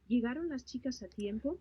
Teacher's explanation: Notice that you're not pronouncing the L, right? It looks like they start pronouncing the word from E.